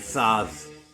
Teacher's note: So that first letter in that line right there, like the first letter in Thrumuvagninn, it's called a thorn, and it's pronounced like a soft TH. A voiced TH, like in the word the